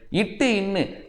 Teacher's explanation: நாவின் நுனி, அன்னத்தின் நுனி